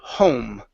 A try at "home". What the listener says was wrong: Right here you said hom. Instead of hom, it's home. Remember, that's an O sound.